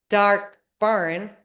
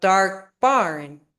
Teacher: Since dark is an adjective, you got to stress the noun barn because it follows the adjective.